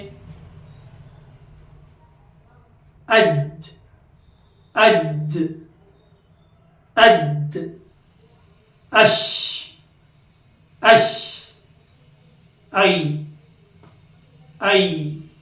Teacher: بیچ زبان تالو کو لگانے سے جیم شین یا نکلتے ہیں